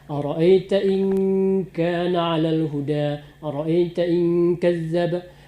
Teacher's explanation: Nun mati jumpa dengan ka, itu ikhfa.